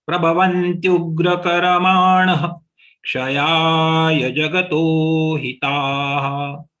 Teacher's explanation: The visarga has to be pronounced like H again, because next is Ksha.